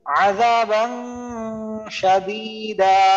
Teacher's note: নুন সাকিন বা তানবিনের পর যে ইকফা পনেরোটা হরফের একটা হলো শিন এটা আসার কারণে আমি একে অস্পষ্ট গুন্না সহিত করব